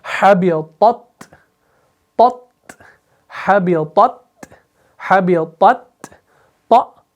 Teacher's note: پہلے طا کو موٹا پھر تا کو باریک · طا کے اندر تفخیم ہے، تا کے اندر ترقیق ہے